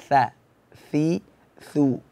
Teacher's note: Tha itu makhrajnya ujung lidah berada di bawah gigi seri. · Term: huruf tha